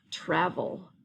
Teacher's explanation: it's making the schwa sound, but it does have the EL